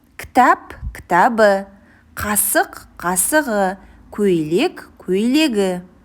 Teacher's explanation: Қ, К, П дыбысына аяқталатын сөздерге дауысты дыбыстан басталатын қосымша жалғанғанда қатаң дыбыстар ұяңданып кетеді.